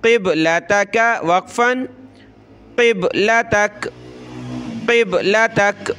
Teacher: با پہ قلقلہ کریں گے، قاف کو موٹا کریں گے، قبلتک یہاں مد کرنی ہے ہم نے۔